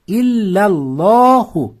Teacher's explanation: Shuning uchun ikki harakat cho'ziladi. Shunda illallohu lo deb ikki harakat cho'zasiz